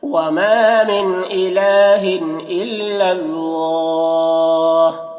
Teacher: اللہ کلام کو پر پڑھیں گے، اللہ کلام سے پہلے زبر ہے